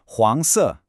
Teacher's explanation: That rising second tone on the first character and then the falling fourth tone.